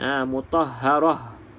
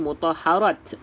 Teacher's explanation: Ini ta marbutah ni, ta bulat. Maka kalau nak berhenti pada ta bulat, perlu dibunyikan seperti huruf ha.